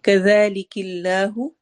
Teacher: اللہ اسم جلالہ کے لام کو باریک پڑھا جائے گا.